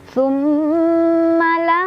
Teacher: Cara bacanya didengungkan, ditahan dulu sampai ke hidung baru dilepas. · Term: gunnah musyaddadah